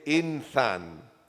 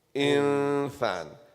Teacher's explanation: We hide the noon. We don't clearly say the noon. We hide it in the makhraj. So normally you will say insan. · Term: ikhfa